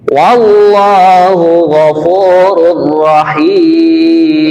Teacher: bunyi tanwinnya sudah tidak ada lagi, yang ada adalah bunyi ra yang bertasydid